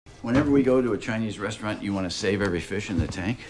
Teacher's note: now we have a much longer thought group many words but no break so all one thought group